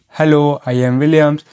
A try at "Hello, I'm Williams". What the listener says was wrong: Almost. It's hello, I'm. I'm is the key. Drop the am and blend the sounds. Hello, I'm Williams. Say it like you're on the phone. No pauses.